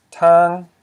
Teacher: a low consonant, t, plus a live syllable, an, equals a high tone.